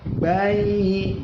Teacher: ya mati sebelumnya fathah, dibaca layin, mad layin